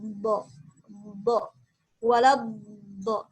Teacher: Dari segi nafas dia tidak boleh keluar nafas, al-jahr. Dari segi suara dia harus mengalir suaranya. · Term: huruf ar-rakhawah